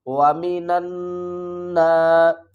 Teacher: واو زبر وا، میم زیر می، وامی نون کو اس نون مشدد کے ساتھ ملائیں گے اور یہاں پر غنہ بھی کریں گے، الف اور لام کو نہیں پڑھیں گے۔